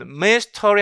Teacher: 이 슈아 사운드 들어가 있는 강세받지 않는 이 슈아 사운드를 아예 삭제시켜 버리는 거예요